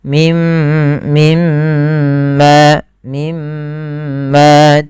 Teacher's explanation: Cara membaca bacaan ghunah menahan suara gunahnya dan dimasukkan ke rongga hidung